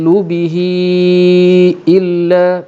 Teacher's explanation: Kerana ha itu berada antara dua huruf berbaris akan memberi hukum mad silah, dan disebabkan selepas ha ialah hamzah, maka dia akan jatuh kategori mad silah tawilah, maka dibaca dengan 4 ataupun 5 harakat